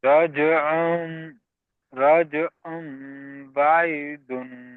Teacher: মিমের দ্বারাই পরিবর্তন করে এক আলিফ গুন্নার সহিত পড়তে হবে। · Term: ইকলাব